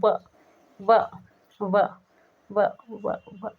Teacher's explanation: व व व व व, मतलब दांत होठ को टच कर रहे हैं, सॉरी, दांत जो है होठ को टच कर रहे हैं, इसलिए दंतोष्ठ व्यंजन है